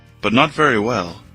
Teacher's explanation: Perceba que a ênfase é no not, que também não tem o T, é o T pausado.